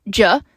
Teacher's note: the voiced post-alveolar sibilant affricate